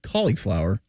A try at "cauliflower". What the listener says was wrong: But it's cauliflower, like short I, not I pronounced as a elongated E.